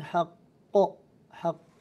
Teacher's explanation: قاف فيه قلقلة في حالة الوقف قلقلة كبرى فيها لأنه الحرف ساكن مشدد، هذه أعلى مراتب القلقلة. إن وعد الله حق حق، تعود فيها التشديد ويظهر ذلك التشديد في الوقف.